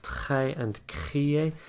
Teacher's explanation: these start with a t and a c these are voiceless sounds and therefore we end up with that slightly messy sound